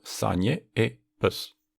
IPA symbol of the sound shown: ə